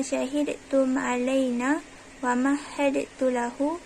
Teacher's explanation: dal yang mati diidghamkan pada ta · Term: idgham kamil